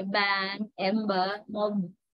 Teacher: Vocal cords are vibrating when you produce B sound, and that's why it's called voiced. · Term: voiced bilabial stop